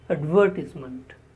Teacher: The stress is on the sound v.